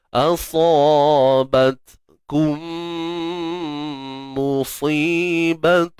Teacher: huruf ta mati, pastikan kita tahan suara dulu, kemudian baru lepas nafas.